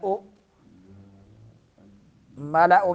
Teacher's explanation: ملأ میں حمزہ ہے، جھٹکا دینا ہے